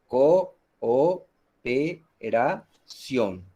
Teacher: se presenta la unión de dos vocales iguales fuertes en sílabas diferentes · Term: hiato